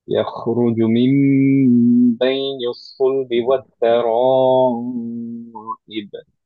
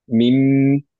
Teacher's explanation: আবারও মিমটাকে ধরে রাখতে হবে বিকজ হচ্ছে গুণনা